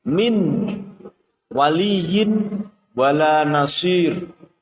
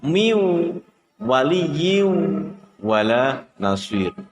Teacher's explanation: apabila ada nun sukun bertemu dengan huruf waw. Jadi huruf nun dimasukkan dalam huruf waw. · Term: idgham bi ghunnah